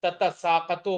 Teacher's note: تتساقطو ہوگی، دونوں تا کو ظاہر کر کے، دونوں کو ظاہر کر کے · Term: باظہار التاء